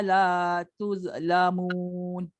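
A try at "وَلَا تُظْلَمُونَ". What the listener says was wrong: Ada sikit lah bunyi z tu.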